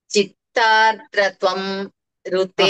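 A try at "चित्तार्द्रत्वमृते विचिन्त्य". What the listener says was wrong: కలపకండి చిత్తార్ద్రత్వ అని ఆపండి. తర్వాత మృతే, చిత్తార్ద్రత్వ మృతే. అదే, కానీ మీరు కలిపి చెప్పట్లేదు కదా, అందుకని ఇది ఈ రకంగా చెప్పిద్దామని ప్రయత్నం చేస్తున్నాను. ఋతే విచింత్య అనేది పదభాగం. చిత్తార్ద్రత్వ మృతే విచింత్య అని చెప్పాలి.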